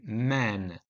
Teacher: m in man requires air to flow through the nose